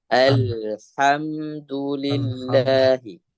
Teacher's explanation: Sedikit huruf H-nya usahakan lebih dari kerongkongan ya, bagian tengah. Jangan sampai mendekati ke bagian pangkal.